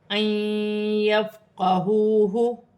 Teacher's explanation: نون ساکن کے بعد یا مشدد آ رہی ہے، حرف یرملون میں سے ہے، نون ساکن میں غنہ بھی کیا جائے گا اور ملا کر بھی پڑھا جائے گا